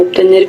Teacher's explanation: Seguida de la letra T, la B se articula como P en pronunciación lenta o esmerada.